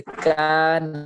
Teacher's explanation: الف سے پہلے کاف ہے یہ باریک حرف ہے اس لیے الف کی باریک ہوگا